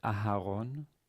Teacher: originally extra short but in modern day it's not shorter than other vowels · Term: hatef